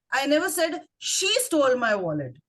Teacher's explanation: stress on the word she